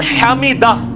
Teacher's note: اور یہ ہا جو ہے وہ حلق سے نکلنے والا ہے